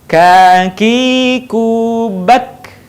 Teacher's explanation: Huruf K menyentuhkan pangkal lisan kita dengan langit-langit bagian belakang di depan huruf Q.